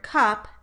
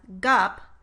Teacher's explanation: For example, if a child produced the target word cup as gup, we would observe that the k sound changed only in voicing, not in place or manner of articulation · a target voiceless consonant becomes voiced in order to match the voicing of a following vowel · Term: pre-vocalic voicing